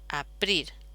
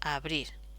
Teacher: esta P, que es sorda, sonoriza